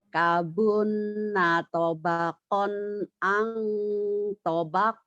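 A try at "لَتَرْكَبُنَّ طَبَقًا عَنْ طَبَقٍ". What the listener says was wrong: Kurang monyong ya di toknya. Latar kabun natobakon ain. Tobak.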